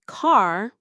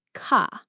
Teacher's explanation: Americans pronounce R with the tongue pulled back slightly, never rolled or tapped. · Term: R sound